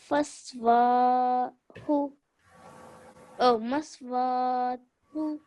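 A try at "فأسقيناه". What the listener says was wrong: So this one, in this word, you've made a few mistakes. So yes, that's a meme, but this one is not a sin, it's a tha. So you have to say it nice and soft, like we learned last time.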